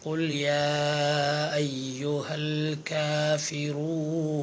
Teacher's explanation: അതുപോലെ യാ അയ്യുഹ എന്നോടത്ത് യാ എന്നതിൻ്റെ നീട്ടാനുള്ള അലിഫിൻ്റെ ശേഷം അയ്യുഹ എന്നോടത്ത് ഹംസ ആണ്. ഇപ്പോൾ മദ്ദക്ഷരമായ അലിഫിന് ശേഷം ഹംസ് വന്നതാണ്. അവിടെ 3 ഹർഫിൻ്റെ ഖദർ നീട്ടണം. ആ മദ്ദിന് മുൻഫസിലായ മദ് എന്നാണ് പേര്. · കാഫിൻ്റെ ഹംസ് എന്ന സിഫത്ത് അഥവാ ഉച്ചാരണ സമയത്ത് കാറ്റ് നടക്കുക എന്ന സിഫത്ത് ഒഴിവാക്കരുത്.